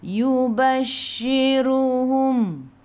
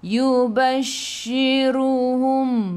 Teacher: shin sifat hurufnya tafashi kena hambur